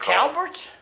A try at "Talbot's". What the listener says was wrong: No R.